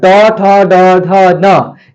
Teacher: ट वर्ग को एम यानी मूर्धा से बोला जाता है